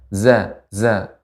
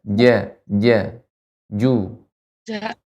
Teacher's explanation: Kalau zai ada sifat sofir, tajam.